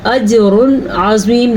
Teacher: عین کی وجہ سے اظہار کا قاعدہ ہوگا تو ہم اس کو ظاہر کر کے پڑھیں گے